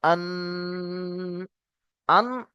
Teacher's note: দেখুন হামজা নুন জবার আন আন ডাইরেক্ট ছেড়ে দেওয়া যাবে না এক আলিফ পরিমাণ গুন্না করতে হবে ধরে রাখতে হবে নাকের মধ্যে আওয়াজটাকে বন্ধ করে রাখতে হবে